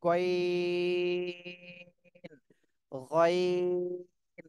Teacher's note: গাইন গলার শেষ ভাগ থেকে উচ্চারণ করতে হবে